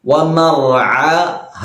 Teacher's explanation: അതുകൊണ്ട് നീട്ടണം വമഹ ഒന്ന് അനാണ് രണ്ടാമത്തേത് ഹ ആണ് പ്രത്യേകം ശ്രദ്ധിക്കണം വമഹ അനിന്റെ മഹറജ് തൊണ്ടയുടെ മധ്യഭാഗമാണ് ഹിന്റെ മഹറജ് തൊണ്ടയുടെ അങ്ങേ അറ്റവുമാണ്